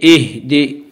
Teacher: حمز ہا زیر حمز ہا کے اوپر جزم ہے، جزم والے حرف کو پہلے حرف سے ملا کر پڑھیں گے، دال زیر دے، دال کے نیچے زیر ہے، زیر کو جلدی پڑھیں، تھوڑا بھی نہ کھینچیں، معروف پڑھیں، مجہول آواز سے بچیں